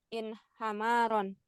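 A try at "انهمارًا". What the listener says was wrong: Di kasrah huruf ketiga.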